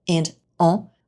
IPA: ɑ̃